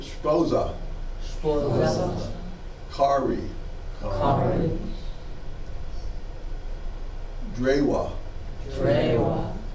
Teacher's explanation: O usually has an open realization, as in the English word call.